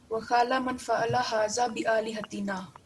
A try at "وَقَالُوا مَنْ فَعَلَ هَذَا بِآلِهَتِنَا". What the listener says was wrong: No, you're making one mistake. وَقَالُوا مَنْ فَعَلَ هَذَا بِآلِهَتِنَا. Once you said qala.